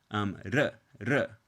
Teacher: in Spanish, this R sound is pronounced using a flap